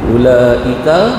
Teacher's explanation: Alif bertemu dengan hamzah dalam satu kalimah. Panjang dia 4, 5 dan 6, ya. Paling panjang 6 harakat, paling pendek 4, ya. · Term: mad wajib muttasil